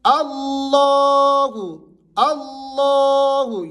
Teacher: لفظ اللہ سے پہلے حرف کے اوپر زبر ہے، تو یہاں پر آپ نے لفظ اللہ کو موٹا اور بھاری کر کے پڑھنا ہے.